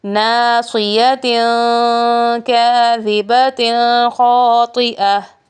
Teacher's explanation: تنوین کے بعد حروف اخفاء میں سے کاف آ گیا ہے تو یہاں نرم غنہ ہوگا، یعنی اخفاء کا قاعدہ لاگو ہوگا۔ اور آگے تا کے نیچے تنوین ہے اور تنوین کے بعد حروف حلقی میں سے خا آ گیا ہے تو یہاں پہ اظہار کا قاعدہ ہوگا، یعنی یہاں غنہ نہیں ہوگا۔